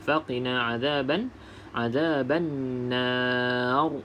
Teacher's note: ra tafkhim, iaitu bacaan ra yang tebal. Okay, sebab sebelum ra berbaris, sebelum ra adalah huruf mat, dan sebelum huruf mat berbaris di atas, maka bacaan ra tersebut kita baca dengan tebal.